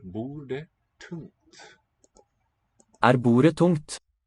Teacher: Okay, the D and the T not really there as stops anymore.